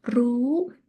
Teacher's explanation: low class with this tone mark you have to say with high tone